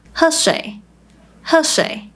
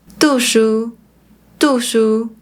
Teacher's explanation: they often turn words into a short falling tone, which sounds similar to a fourth tone